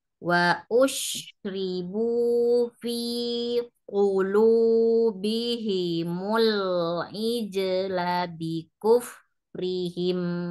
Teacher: wa ush, shinnya disebarin udaranya